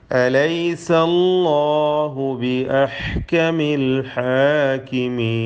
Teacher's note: ഹാഇൻ്റെ ഉച്ചാരണം പ്രത്യേകം ശ്രദ്ധിക്കുക. മഖ്റജ് തൊണ്ടയുടെ മധ്യമാണ്, തൊണ്ടയുടെ മധ്യത്തിൽ നിന്നാണ് ആ അക്ഷരം ഉത്ഭവിക്കുന്നത്.